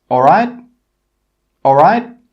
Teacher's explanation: Note here how the intonation or the pitch goes up at the end.